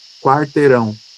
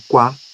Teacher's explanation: Quando construímos algo como quarteirão, esse U, ele é mais fraco em relação ao A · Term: semivogais